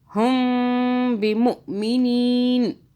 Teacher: तो हम मीम पे इस तरह 2 सेकंड के लिए मीम को मुंह में रखेंगे। हुम करके मुंह में रख लेना, 2 सेकंड के लिए होल्ड कर लेना।